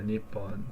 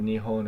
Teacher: P turned into um H at some point in the history of the language which is why it can either be said Nihon or Nippon